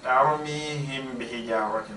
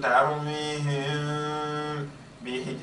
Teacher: So what I do is I hide the meme. I don't completely close my lips. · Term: Ikhfa'u Shafawi